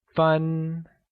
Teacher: minutes translates to fun and is pronounced with a high level tone